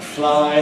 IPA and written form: flaɪ (fly)